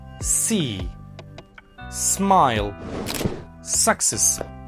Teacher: Manner of articulation, air passes continuously through a narrow gap, creating friction that makes it a fricative sound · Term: voiceless alveolar fricative